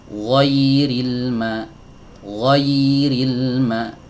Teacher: aliran pada huruf ya ini lebih banyak, lebih panjang daripada aliran pada huruf lam.